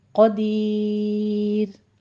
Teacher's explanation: را ساکن ماقبل یا ساکن اور ماقبل کسرہ ہے تو یہ را باریک پڑی جائے گی، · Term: را مرقق